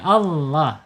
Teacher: lam justru ditebalkan ya, Allah, tebal. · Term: tafhim, tebal